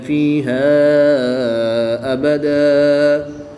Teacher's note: الف مدہ کے بعد حمزہ دوسرے کلمے میں ہے، تو یہاں پر مد منفصل ہوگی، 2 سے 3 الف تک کھینچ کر پڑھیں گے · وقف کی حالت میں 2 زبر کی تنوین کو الف مدہ سے تبدیل کر کے پڑھیں گے